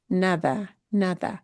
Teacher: That D will sound like a TH.